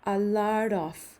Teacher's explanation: Entonces esa T se encuentra entre el sonido de dos vocales, lo cual lo convierte en R al revés.